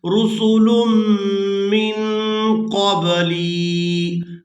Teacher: यहाँ मीम मुशद्दद पर गुना करेंगे और इसके बाद नून साकिन पर इख्फा करेंगे, यानी नून की आवाज़ को नाक में छुपा कर अदा करेंगे।